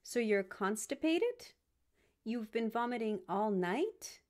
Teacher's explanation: you can add in rising intonation to invite a response